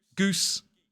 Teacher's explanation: with the tongue much further forward in the mouth sounding a bit more like geese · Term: modern RP